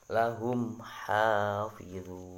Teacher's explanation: Cara membacanya yaitu dengan menjelaskan bacaan mim sukun tersebut tanpa berdengung. Jadi mimnya harus dibaca dengan jelas mimnya. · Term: idhar syafawi